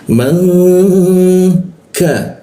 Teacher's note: nun mati bertemu ka itu didengungkan